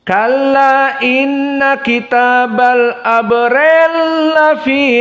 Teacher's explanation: berkesendirian As-Susi mengidghamkan al-kabir antara ri dengan lafi